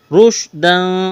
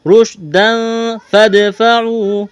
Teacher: رشداً، را کو موٹا کرنا ہے، تنوین کے بعد فا ہے، حروف اخفا ہے، یہاں پر اخفا کریں گے، آواز ناک میں چھپائیں گے